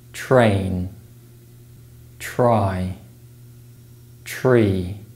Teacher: when the T sound is followed by the r sound it's replaced with the CH sound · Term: affrication